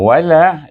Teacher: Suku kata la itu dibaca dengan mad asli kerana sebelum alif ada baris di atas lam itu. Jadi kita baca mad asli 2 harakat.